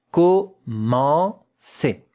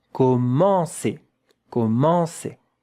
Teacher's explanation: Yeah, nasal vowel. There is a bit of air when you pronounce it that has to come out of your nose.